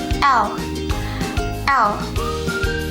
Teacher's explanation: Kelima, lateral, yaitu apabila ujung lidah bersentuh dengan gusi dan udara keluar melalui samping lidah, yaitu saat kita menyebut huruf L.